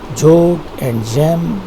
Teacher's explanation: Both of them are palatal sounds, and in the examples of words you can take joke and gem. The beginning sounds are actually the palatal sounds.